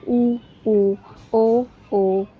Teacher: हमारा जो होठ हैं वो सर्कल की तरह बन जाते हैं। यानी गोल हो जाते हैं। जिन स्वरों के उच्चारण में वो वर्तमुखी होते हैं।